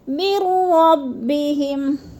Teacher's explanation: کیونکہ ادھر زبر ہے، زبر کو لمبا نہیں کرنا۔ مِن رَبِّهِمْ، میم کو را کے ساتھ ملا کر ادغام کرنا ہے